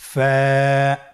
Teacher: ফা হরফটি উচ্চারণের ক্ষেত্রে বারিক হবে এবং এক আলিফ টেনে পড়তে হবে।